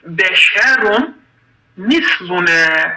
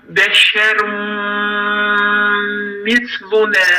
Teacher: nun harfin sesi gizledilir, mim harfi şiddetli ve gunne olur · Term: yermelun qaydası